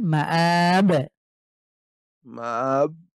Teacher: মাব শেষে গিয়ে একটা ধাক্কা দেবেন মাব মাব আপনি মাবে গিয়ে মুখ লক করে ফেলেন লক করা